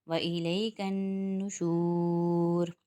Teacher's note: و الیکل اس کو بھی جلدی اٹھائیں گے، نون مشدد آ رہا ہے نشور میں، نون مشدد پہ ایک الف کی مقدار غنہ کریں گے، یعنی ایک انگلی اور کھولی اور بند کی، اتنا غنہ کریں گے یعنی ناک میں آواز کو چھپائیں گے۔ نشور شور پہ واو مدہ بن رہا ہے تو یہاں پر بھی ایک الف کی مقدار کھینچیں گے۔